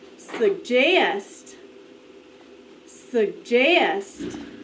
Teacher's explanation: the accent is on the second syllable